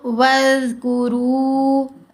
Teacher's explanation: تو وَاذْكُرُوا، وز اور وز فرق ہے۔ زبان دانتوں کے درمیان میں ہے، تھوڑی سی زبان منہ سے باہر نظر آئے گی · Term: نرم آوازیں